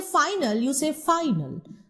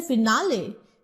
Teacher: Because when you say final, where you stress on the F-I. But when you say finale, then you see you are automatically not stressing on the first syllable